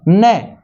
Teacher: न इसका उच्चारण स्थान दंत भी है और नासिका भी है।